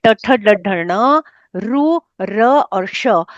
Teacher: इन सब का उच्चारण स्थान मूर्धा है इसलिए इनको कहते हैं मूर्धन्य वर्ण